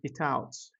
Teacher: It out biraz daha flap t yaptım. Yani releştirdim hafiften.